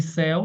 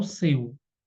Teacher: céu aberto, seu fechado